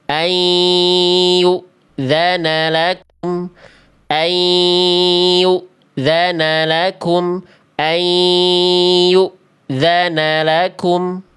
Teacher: Ini tahan 2 harokat. An-nya lebur, kasih sengau. Tuh masuk hidung.